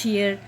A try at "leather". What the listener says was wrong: Oh my God. Start from L sound. Leather.